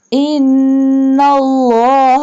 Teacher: Do gunna on noon because it has tashdid and bold Allah word because the previous word has fatha sign, and stretch the ya yastahaji because ya has mad and also it also has vertical kasra sign.